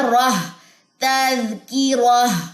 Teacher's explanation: تنوین میں دونوں پیشیں جو ہے وہ ڈراپ ہو جائیں گی اور اس کے ساتھ ساتھ یہ دونوں جو ڈاٹس ہیں تائے مربوطہ کے یہ بھی ڈراپ ہو جائیں گے. پیچھے ہائے ساکنہ رہ جائے گی اور ہائے ساکنہ کہاں سے سپورٹ لے گی؟ را کی زبر سے.